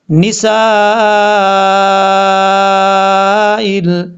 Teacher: اب اس کے بعد ہے نسائل، یہاں نون کے بعد سین ہے، سین کو سیٹی کے ساتھ پڑھنا ہے کیونکہ یہ حروف صفیریہ میں سے ہے، اور سین کے بعد جو الف ہے، الف کے اوپر مد ہے، اس مد کو مد متصل کہا جاتا ہے، اور مد متصل کو 2 سے 2.5 الف کے برابر لمبا کیا جاتا ہے۔